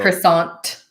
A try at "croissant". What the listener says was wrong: By the way, in French, you don't say this T at the end. You just say croissant.